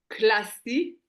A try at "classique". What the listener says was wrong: pas classé classiqu on dit classique.